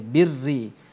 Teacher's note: ra ini berbaris bawah, maka dinipiskan bunyinya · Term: ra-nya nipis